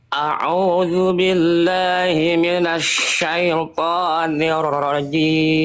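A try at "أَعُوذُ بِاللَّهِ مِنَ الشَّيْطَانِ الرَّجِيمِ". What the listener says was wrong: lam itu lam huruf tipis Huruf tebal tipis ahah tadi terlalu tebal kurang tipis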